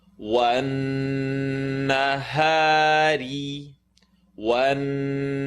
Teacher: the Noon Shadda has to make the full nasal sound in the nose.